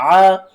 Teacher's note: عین کو آپ نے حلق کے درمیان والے حصے سے ادا کرنا ہے